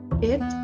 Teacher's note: Second, there is also the word bit that is pronounced in the front area, and the height of the tongue is in the middle of high and mid